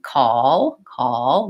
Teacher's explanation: the American Way of saying call call will have that dark L which sounds like oh